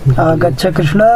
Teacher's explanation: यहाँ पहले वाक्य का जो टी भाग कृष्ण का अ है वह प्लुत हो जाता है